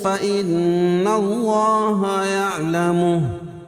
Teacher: اللہ کے لام سے پہلے نون کے اوپر زبر ہے تو اللہ کا لام پر پڑا جائے گا. یعلمہ الٹا پیش کو وقف کی صورت میں ہائی ساکنہ سے بدل دیں گے.